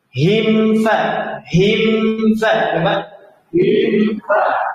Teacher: ini gunnah masuk hidung, cuma tidak dipanjangkan